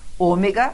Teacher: não é a última, não é a penúltima, é a antepenúltima sílaba tônica, tanto que veio com acento e faz a gente saber disso.